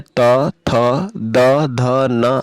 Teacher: जिन वर्णों का उच्चारण करते समय दोनों दांत एक दूसरे के साथ टकराते हैं ऐसे वर्णों को हम दांत्य वर्ण कहते हैं